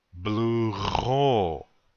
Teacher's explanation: Again, the accent is on the second syllable.